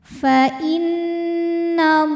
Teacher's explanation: Fa innallah, Allah matobi'i muqaddar karena huruf lam berbaris fathah panjang. Maka cara bacanya huruf lam ini kita panjangkan 2 harokat saja